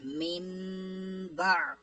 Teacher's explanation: اس کی تعریف تھی کہ نون ساکن یا تنوین کے بعد حرف با آ جائے تو اقلاب ہوگا، یعنی نون ساکن اور تنوین کو میم سے بدل کر اخفا کریں گے، غنہ کر کے پڑھیں گے